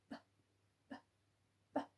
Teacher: which is b, b, b, with a little puff of air